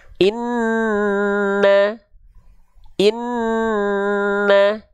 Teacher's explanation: lafalkan huruf nun bertasydid maka dia ditahan dua harakat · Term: gunnah